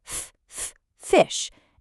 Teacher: we get the friction of the F sound, ff fish